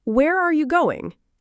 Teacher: Practice saying where are you going and notice how your voice naturally goes down.